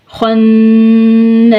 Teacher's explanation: خا کو موٹا پڑھیں گے، نون مشدد پہ گنہ ہوگا اور الف ساکن سے پہلے زبر ہے، الف مدہ کو کھینچ کر.